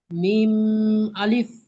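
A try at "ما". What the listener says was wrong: মিম গুন্না হবে না, মিম আলিফ।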